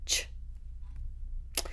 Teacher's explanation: If you sit down and think about how you make the sound ch, your tongue goes into the exact spot for a t, and then you put a sh after it.